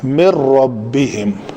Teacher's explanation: ادغام کامل سے مراد ہے کہ نون کی آواز مکمل طور پر غائب ہو جائے گی